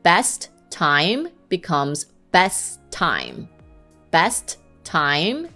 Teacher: you basically just pronounce it once usually the sound of the second word